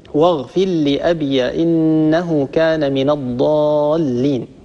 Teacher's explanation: في الآية 86، واغفر لأبي إنه كان من الضالين، قرأ حفص رحمه الله بإسكان الياء، واغفر لأبي إنه كان من الضالين، طبعا وهو على أصله في المد المنفصل. أبو عمرو رحمه الله يدغم الراء في اللام، واغفر لأبي إنه كان من الضالين، طبعا بخلف عن الدوري، والإدغام هو طريق التيسير.